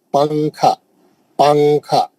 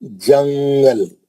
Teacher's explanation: नून की आवाज को नाक में स्विच कर देंगे और उसको छुपाएंगे। छुपा के गुना करेंगे। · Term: इरफा